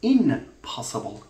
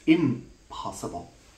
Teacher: in anticipation of the production of the bilabial sound it also assumes labiality it also becomes labal so P has given labiality or the